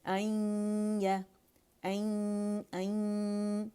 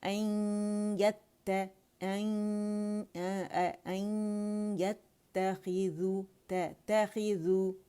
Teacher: پہلے ہم جو یا ساکن ہے اس پہ ہمارا غنہ واضح ہونا چاہیے. این یا این، ٹھیک ہے، کیونکہ نون چلا گیا یا کے اندر.